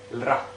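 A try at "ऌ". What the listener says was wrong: No, r is not Pronounced. La. So it became le plus a la.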